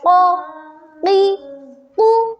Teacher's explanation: زبان کی جڑ کا آخر جو کوے کے پاس ہے، جب اوپر کے تالو سے لگے تب ادا ہوتا ہے قاف۔ تو پیارے بچوں، میں آپ کو بتاتی ہوں کہ قاف حروف قلقلہ میں سے بھی ہے اور حروف استعلاء میں سے بھی، یعنی ہم اس کو سختی سے پڑھیں گے اور موٹا پڑھیں گے۔